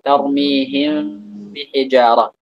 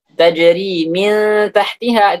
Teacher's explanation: kalau di mim mati dengan bertemu dengan ba, itu mimnya jangan ditiadakan. Diucapkan mimnya seperti itu.